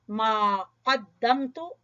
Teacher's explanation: قاف کو زبان کی جڑ سے پڑھتے ہوئے